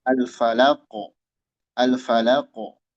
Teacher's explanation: yaitu bab qalqalah ya, memantul.